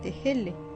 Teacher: Le H, qui est une sorte de fricative avortée, l'équivalent de notre H aspiré